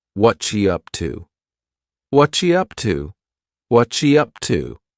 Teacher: what are has just been smooshed together